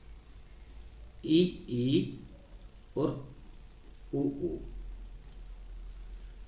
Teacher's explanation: इसमें जिह्वा की स्थिति सबसे ऊपर होती है, जिह्वा ऊपर और मुंह जो है वो कम खुलता है, मुख कम खुलता है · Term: संवृत्त स्वर